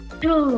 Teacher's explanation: ghép vào từ vẫn giữ nguyên cái độ bật hơi nhá giữ nguyên cái độ vô Thanh vàở bật hơi Nó không phải là tu mà là to